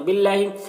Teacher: اللہ کے لام کو باریک پڑھیں گے، کھڑا زبر ایک الف کے برابر کھینچیں گے۔